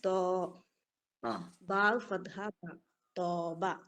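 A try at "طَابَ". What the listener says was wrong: തോന്നാക്കണോ? അത് തോണിന്നുള്ള തോ ആയിപ്പോയി. വായി തുറക്കട്ടെ ഉരുട്ടാതെ. തോബയല്ല താബ. യാ അങ്ങനെ പറ്റ മറ്റേ തോബാന്നായിപ്പോ പെട്ടെന്ന് മനസ്സിലാവും. വേറെന്തോന്നായതുപോലെ തോന്നും. താ ഫത്ഹ മുഫഖമ അലിഫ് മദ് മുഫഖമ എന്നിട്ട് അത് തൊബീയാണോ അല്ലേന്ന് പറയും.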